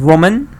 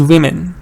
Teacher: So woman is the schwa, that's the singular. Women is the plural form, and it's the E.